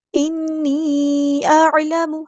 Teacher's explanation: حمزہ اور عین کی آواز میں واضح فرق ہونا چاہیے، حمزہ کی آواز واضح ادا کرنی ہے، عین کو نرمی سے ادا کرنا ہے، حمزہ کی آواز سخت ہونی چاہیے.